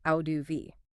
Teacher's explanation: it becomes flap t because it's between vowels and the second vowel is unstressed